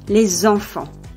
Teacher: The plural ending -s is normally silent, but when it is followed by a vowel or a silent h, it is pronounced /z/.